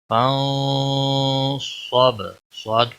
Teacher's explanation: صاد کو موٹا پڑھیں گے، حروف مستعلیہ میں سے ہے